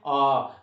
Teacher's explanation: विवृत स्वर एक ही है, आ, उसका उच्चारण करते समय मुख सबसे ज्यादा खुलता है